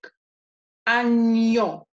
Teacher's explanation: And what it does is it gives and invisible, and I say invisible because you will not see this written after the ñ, but it gives an invisible I sound after the N